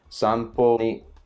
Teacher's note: We have several words that are atamadaka have kyou, asa and then Kinjo, and then if you go back here, this is a Heiban word where it starts low and it goes high and it just keeps going, even with the particles